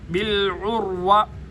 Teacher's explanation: بالعروہ عین کو گلے کے درمیان سے ادا کیا جائے گا. بالعروۃ واو پہ ہونٹ گول بالعروۃ الوثقی.